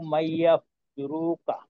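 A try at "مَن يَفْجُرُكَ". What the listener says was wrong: আচ্ছা, এই শেষের একটু লম্বা হয়ে যাচ্ছে, অর্থাৎ রুকা, রুকা না বলে রুকা।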